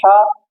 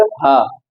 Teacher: एक हलक से अदा करते हैं हा, और एक एकदम नीचे हलक से हा